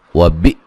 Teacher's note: حمزہ کو جھٹکے سے ادا کریں گے